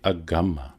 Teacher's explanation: because we can say that this nya sound has been assimilated and smoothed out to agamma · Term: assimilation